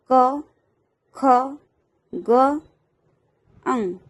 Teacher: કંઠ્ય વ્યંજન એટલે કે જે ગળામાંથી ઉચ્ચાર નીકળે છે